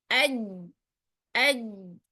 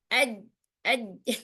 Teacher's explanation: tengah lidah kita terangkat dan menempel pada langit-langit mulut yang sejajar dengannya. Ya, jadi memang huruf jip ini menempel tengah lidahnya dengan langit-langit. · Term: jim